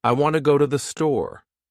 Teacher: In this sentence, want and store are stressed, and the other words are said quickly and softly. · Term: Sentence stress